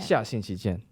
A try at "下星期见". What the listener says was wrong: You know what I think it is? I think you need to close your mouth more in between words. Like 下星期.